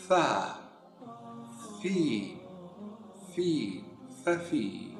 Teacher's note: Huruf fa diucapkan saat kita menjadikan dua gigi siri kita bagian atas menyentuh bibir bagian bawah.